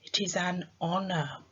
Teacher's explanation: the letter H in honor is silent I can only hear the vowel sound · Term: silent letter H